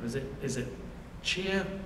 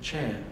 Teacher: younger speakers of New Zealand English, typically merge these two vowels